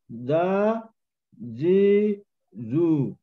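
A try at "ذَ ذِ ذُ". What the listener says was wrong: Okey, bagi saya lidah tak berapa jelas keluarnya tapi dia dah selamat daripada jadi hurufnya zai. Cuma kalau lebih fasihnya zu.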